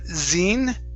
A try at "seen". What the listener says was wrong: give me an unvoiced S.